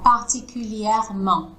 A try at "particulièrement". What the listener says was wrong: Parfait, c'est vraiment exactement comme ça. Super.